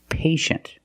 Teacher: The first syllable is a long A, like day and pay